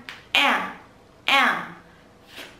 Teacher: Đây là âm E đẹp. E bướm nhá. Chúng ta âm căng.